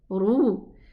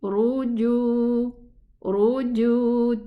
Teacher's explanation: The ra with a dhamma is elevated. And the jim, it's not. Don't confuse the jim with the kha.